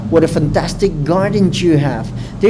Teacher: giving a high intonation at the end of the sentence